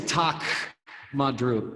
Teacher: you don't really hear the K okay I will just tell you it's like a glottal stop